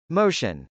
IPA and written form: mˈoʊʃən (motion)